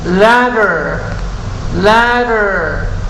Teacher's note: Esta es la flat D, como una R suave. D, ladder. Fine, fine.